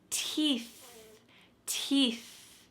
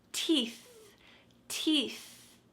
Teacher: My tongue is between my teeth and there's a stream of air coming out.